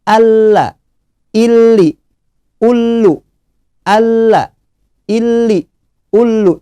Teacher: Selanjutnya ada huruf lam bertasydid. Tidak boleh ditahan, ya, hanya masuk saja. Setelah itu langsung keluar.